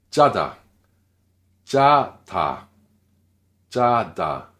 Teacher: Donc, encore une fois, tendu sans souffle.